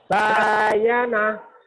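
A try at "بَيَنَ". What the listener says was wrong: Nggak ada yang panjang. Nggak ada yang panjang. Bayana. Bayana. Bayana. Bayana. Kelihatannya sama ya, Pak ya. Ada bedanya. Nih, Pak, yang pertama. Bayana.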